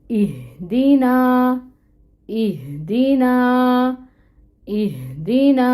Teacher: تو آپ دیکھیں یہ کس طرح اس کی ادائیگی ہے، اس میں یہ والی ہا یوز ہو رہی ہے، اس کو ہم نے اہدینا نہیں پڑھنا، وہ مطلب بدل جائے گا، ہم نے اس کو پڑھنا ہے ہدایت کے سینس میں، اور یہ جو دو چشمی ہا آ رہی ہے یہ ادا ہوتی ہے اکسر الحلق سے، اور اس کی ہیوی ساؤنڈ ہوتی ہے